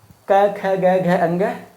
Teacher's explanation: इनके उच्चारण के लिए हमें कंठ का सहारा लेना पड़ता है।